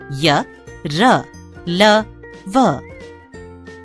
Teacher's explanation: इनके उच्चारण में जीभ मुंह के किसी भाग को पूरी तरह स्पर्श नहीं करती। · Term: अंतस्थ व्यंजन